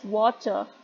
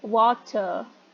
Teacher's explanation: But if I am pronouncing in um, American English, and I am saying that water, so what happens that there is a r sound at coda position.